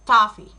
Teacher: our lips are a little bit rounded. The highest part of our tongue is the back.